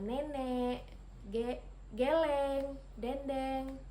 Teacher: vokal E, madia bawah depan dengan posisi mulut semi terbuka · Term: vokal E madiyah bawah depan